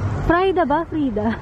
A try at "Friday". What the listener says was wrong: No, because it's Friday. If you add a Y, then it's Friday.